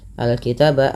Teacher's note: Al-kitaba alif lam qamariyah, dibaca dengan jelas suara lamnya. Al-kitaba taba, ada fathah bertemu alif lagi kecil.